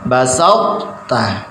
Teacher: Ini tidak ikut diidghamkan. Jadi ketika membaca basautta itu ujung lidah ini sudah berada di makhrajnya ta. Cuma ketika membaca ta niki bagian lidah menempel ke langit-langit mulut dan isti'la tebal. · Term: idbak dan isti'la